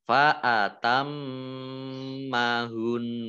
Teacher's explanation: mim tasdid dibaca gunah atau mendengung, ditahan 2 harokat. Nah, kemudian ini hun wakof ya, jadi nunnya 2 ya, nun sukunnya 2, makanya ini nun tasdid itu mendengung atau gunah, maka di sini mendengungnya agak panjang gitu ya.